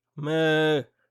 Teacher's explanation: La consonne initiale est basse, donc le ton est plat.